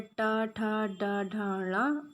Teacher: जो हमारी जीवा होती है, तो जीवा नोक को उलटकर मध्य तालु से स्पर्श करती है। जैसे टा, ठा, यानी कि जो हमारी जीवा होती है उसके आगे का जो भाग होता है वो क्या होता है, थोड़ा सा मुड़ जाता है और मुड़कर मध्य तालु को स्पर्श करता है, इसलिए इसे मूर्धन्य कहा जाता है।